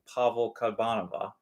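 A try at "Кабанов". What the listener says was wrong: Kabanova is the female. No, just V. No, sharp V. no V. A, big A.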